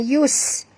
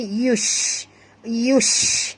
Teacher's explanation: Okey, bunyikan tafashi pada huruf shim. Yush, bukan yus.